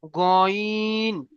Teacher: এটা গাইন নয়, এটা গইন, মুখকে গোল করে পড়তে হবে